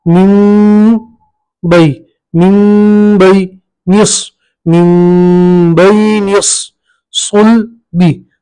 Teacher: नून साकिन को हम ये जो मीम से बदल देंगे, ठीक है। तो मीम पढ़ेंगे, मीम, मीम के ऊपर जज्म और ये नून की जगह हम मीम पढ़ेंगे मीम, मीम बई निस सुल बी।